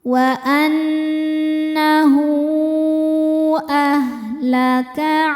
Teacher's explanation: Hu hukumnya adalah mad silah tawilah sebab ada ha dhamir yang diapit 2 huruf yang hidup dan setelahnya huruf hidupnya hamzah a. Cara bacanya dipanjangkan haknya 4 atau 5 harokat.